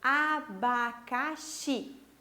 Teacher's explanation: a última sílaba da palavra abacaxi é a mais forte, a sílaba tônica